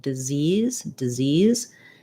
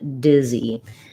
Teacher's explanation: disease has second syllable stress and dizzy has first syllable stress